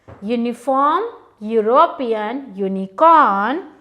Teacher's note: All these words begin with the phonic sound U, which is a consonant sound.